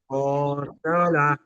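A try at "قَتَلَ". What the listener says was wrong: ত নাই, এটা তা তা, ঠিক আছে, কতালা। হ্যাঁ,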